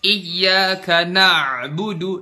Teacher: Contoh berlebih-lebihan pada makhraj huruf, iyyaka na'budu. Makhraj ainnya bener tuh di situ di tengah tenggorokan. Na'budu, tapi kita lebay, kita terlalu tenggelam di huruf ain.